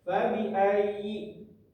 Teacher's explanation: Maka kita harus membacanya dengan cara menekan. Menekan selama kurang lebih dua ketukan. · Di sini terdapat hukum di kalimat pertama, fabi ayyi di huruf ya ini ada yang namanya tasdid, maka kita harus membacanya dengan cara menekan selama kurang lebih 2 ketukan